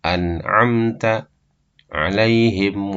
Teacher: mim mati bertemu dengan selain ba atau mim maka dibaca izhar dibaca jelas mimnya tidak ditahan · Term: izhar syafawi